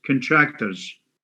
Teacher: it's contractors you have two schwas